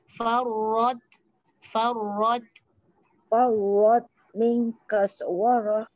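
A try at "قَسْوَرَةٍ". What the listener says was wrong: Kos. Jangan kas. Kaswarah. Kof dah betul. Tebas. Sin tu senyum balik. Kaswarah. Qaswarah.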